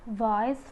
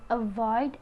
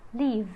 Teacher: The next sound is V. V is voiced labiodental fricative, for the initial position is voice, for the medial is avoid, and the final is leave.